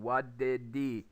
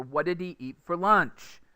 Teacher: We take the spaces between the words away, between what did he, and the words are going to jam together